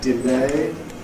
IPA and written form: dɪˈleɪ (delay)